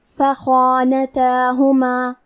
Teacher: حرف الخاء کی ادائیگی حلق کے اوپر والے حصے سے ہے۔ خاء حروف التفخیم میں سے ہے تو ہمیں خاء کو اور اس کے بعد مد الف کو دونوں کو بھاری آواز میں ادا کرنا ہے۔ فخانتہما۔ حرف التا پہ کھڑا زبر ہے تو یہاں مد الف ہے، ہم مد الف کو ظاہر کریں گے۔